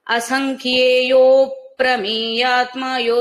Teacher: ప్రయోగం ఉంటుంది అందువల్ల అసంఖ్యేయో ప్రమేయాత్మయో దీర్ఘం తీస్తూనే ప్రమేయాత్మలో ఉన్న పకారాన్ని పట్టుకోండి యో దీర్ఘం తీస్తూనే పకారం పలికేస్తే అఘాతం వస్తుంది మధ్యలో విభజన జరిగి రెండు పదాలలాగా కూడా వినపడదుఅన్నమాట